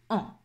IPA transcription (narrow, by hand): ɑ̃